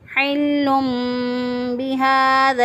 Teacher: نون ساکن یا تنوین کی آواز کو میم سے بدل کر پڑھتے ہیں · ہا کھڑی زبر ہا ایک الف کے برابر لمبا کریں گے، کیونکہ یہاں پہ مد اصلی ہو رہی ہے۔ مد اصلی جہاں پر ایک الف کے برابر لمبا کرتے ہیں، اس کو اس کی اصلی اور ذاتی مقدار کے مطابق پڑھیں گے، یعنی ایک الف کے برابر، تو اس لیے اس کو مد اصلی کہتے ہیں۔ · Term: اقلاب